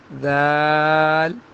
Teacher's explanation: نرم ہوگی تھا کی طرح، زبان اوپر والے دانتوں سے ٹچ ہوگی